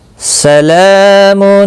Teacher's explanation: لام کے اوپر کھڑی زبر ہے، ایک الف کے برابر کھینچ کر پڑھیں گے، اور وقف اگر کرنا ہوگا سلام میم ساکن پڑھا جائے گا، لیکن یہاں پر ملا کر اب پڑھیں بہتر ہے۔